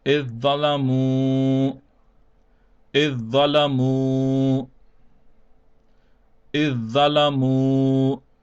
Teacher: Now we skip the dal and only pronounce the dha, which means that the alif with the kasra will be joined over to the za, and the zal will not be pronounced at all